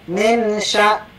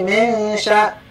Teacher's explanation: guna yang harus ditahan tiga kali ketukan